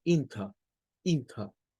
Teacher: no suena la R y lo que suena es un sonido de schwa al final y por eso ellos sonarían esto como inter, inter y no inter.